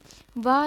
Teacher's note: वा दंत और ओष्ठ से बोला जाता है।